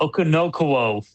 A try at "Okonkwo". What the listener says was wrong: You put ends where K should be.